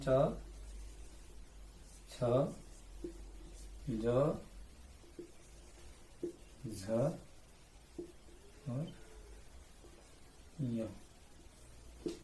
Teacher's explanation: चौ वर्ग है, इसमें भी 5 वर्ण च, छ, ज, झ और य। इसका उच्चारण स्थान तालु